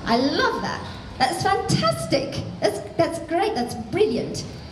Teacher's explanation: with the British I'm not emphasizing the vowels I'm emphasizing the consonants I'm pushing forward on the consonants